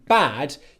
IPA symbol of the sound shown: æ